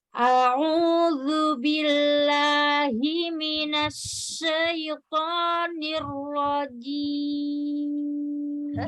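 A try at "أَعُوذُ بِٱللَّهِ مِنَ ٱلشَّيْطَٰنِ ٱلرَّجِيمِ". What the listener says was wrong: Jangan ragu jimnya. Ini rajim. Ya, huruf tipis ya.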